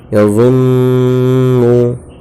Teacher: ظا نون پہ زن، نون پیش نو، نون پر پیش کی حرکت ہے، حرکت کو جلدی پڑھیں، تھوڑا بھی نہ کھینچیں۔